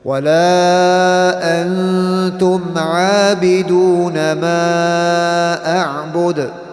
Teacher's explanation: We'll go into more detail inshallah in future lessons. But this is where we hide the noon sound and it comes through the nasal area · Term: ikhfa